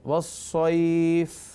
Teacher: اگر فا کو ساکن کریں گے تو دیکھیے مد کی کیفیت بنے گی، والصیف، تھوڑا سا کھنچ رہا ہے